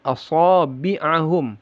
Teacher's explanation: aso ada sifat istilnya itbaq juga tebal dan tebal sekali